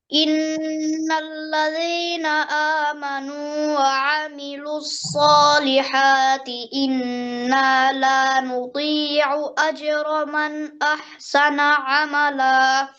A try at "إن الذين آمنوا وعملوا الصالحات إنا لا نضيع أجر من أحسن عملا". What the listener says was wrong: খেয়াল করেন নতি নতি এরকম ত এর মতো শোনা যায় হ্যাঁ নদী নদী জিহ্বার সাইড দিয়ে দালের সাথে অর্থাৎ জিহ্বার টিপের সাথে কোনো সম্পর্ক নাই দদের হ্যাঁ লা নুদিউ আর যখন সলিহাতি যেন হা এরকম গলার থেকে বলার সময় যেন হাঁটা মোটা না হয়ে যায় এটাও খেয়াল করবেন وعملوا الصالحات صالحات إنا لا نضيع ঠিক আছে ভাইয়া আরেকবার ট্রাই করে ইন্নাল্লাযীনা আমানু সুন্দর হচ্ছে